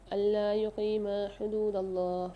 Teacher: اللہ کے لام کو موٹا کر کے پڑھیں گے